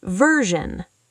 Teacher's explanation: Version, the SI makes a zh sound, like pleasure.